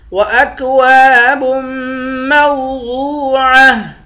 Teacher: با کو میم کے ساتھ ملا کر پڑھیں گے، میم پر غنہ کریں گے